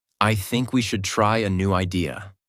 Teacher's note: Voice goes down at the end. This is called falling intonation